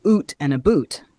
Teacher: Another difference is in the pronunciation of the oo sound, where Canadians often pronounce it as oo in words like out or about, while Americans might pronounce it closer to ow. So for instance, a Canadian might say oot and a boot instead of out and about.